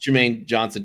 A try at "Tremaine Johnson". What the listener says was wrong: with the T. Tremaine.